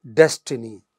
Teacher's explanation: destiny it is stressed on the initial syllable